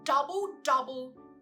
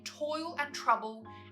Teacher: Notice that most of the sounds here are plosives, such as the D in double, double, T in toil and trouble